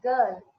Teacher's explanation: R is not audible